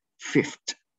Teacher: the sound V is changed into a voiceless, which has the same place of articulation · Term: voicing assimilation